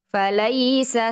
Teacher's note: Falaisa sedikit naik di situ karena nafi